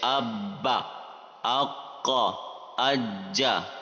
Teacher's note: اب یہاں سوال ہے کہ اگر وہ مشدد ہوں یعنی ان کے اوپر تشدید ہو، ڈبلو سائن جو ہوتا ہے، انہیں کیسے پڑھیں گے؟ جواب ہے، جب کلکلہ حروف مشدد ہوں تو انہیں جماؤں کے ساتھ ادا کریں گے، یعنی تھوڑا جما کر پڑھنا ہے، رک کر